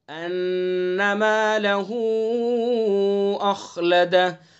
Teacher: یحسب ان نون مشدد ہے تو غنہ کریں گے